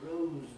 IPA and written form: rəʊz (rose)